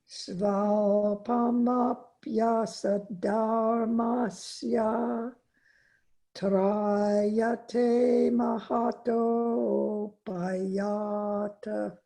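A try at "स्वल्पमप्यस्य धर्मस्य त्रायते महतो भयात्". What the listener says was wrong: Except for neglecting one ya, it was perfect. Svalpamapyasya dharmasya.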